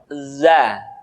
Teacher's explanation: diucapkan dengan cara ujung lidah kita berada di antara dua gigi seri bagian atas dan bagian bawah zat menyerupai dengan pengucapan huruf z di dalam huruf latin tetapi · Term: huruf dza